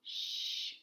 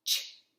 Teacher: SH is long, shh, and CH is short, ch.